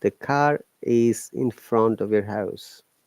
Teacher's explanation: In car the R is silent.